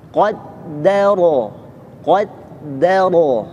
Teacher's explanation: Do-nya ikut tebal. Jadi pastikan kofnya tebal, dalnya tipis. Kemudian ro-nya tebal.